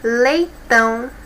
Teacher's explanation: a última sílaba que é mais forte